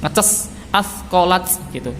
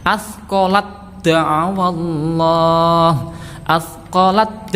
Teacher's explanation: Tapi karena di depannya bertemu dal, maka sifat hams dari tak ini ya menjadi hilang, langsung masuk ke dal. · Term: idgham mutajanisain